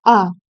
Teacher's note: दीर्घ स्वरों के उच्चारण काल कितना है? दो मात्रा।